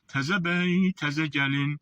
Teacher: Ahəng özü tələb edir ki, incələşdirib ə deyəsən.